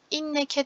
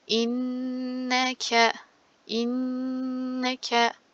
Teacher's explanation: Inneke inneke derken yine bakın nun üstünde şedde var. Şedin nunları ve mimleri şeddesini tutarak okuyorum.